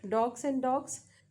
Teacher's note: however separately s is voiceless but when it comes with G then it becomes voiced